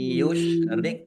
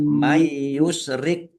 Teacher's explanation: Bacaan idgham bighunah. Masuk dengan mendengung.